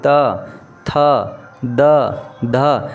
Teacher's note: ये तमाम जो वर्ण है आपके दांत को हल्का हल्का क्या करते हैं छूते हैं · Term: दंत वर्ण